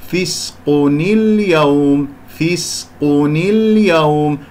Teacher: وأنتقل إلى هذه التي موجودة عندي همزة الوصل الموجودة الساكنة، لما في الوصل التقاء الساكنين سأكسر النون حتى أنتقل إلى الكلمة الأخرى